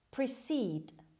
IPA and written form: prɪˈsiːd (precede)